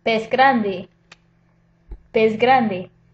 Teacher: The G is voiced, g, g. So that S sound, pez, becomes pez with a Z sound because it comes before a voiced consonant.